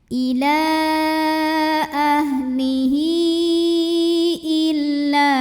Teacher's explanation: Nah ini alif dengan harokat kasrah hamzahnya. Maka hak dhamirnya dipanjangkan boleh 4 boleh 5 harokat ya. Jadi ini sebetulnya sama seperti mad jaiz munfasil ya, dibaca panjangnya karena di depannya ada hamzah ya. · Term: mad silah tawilah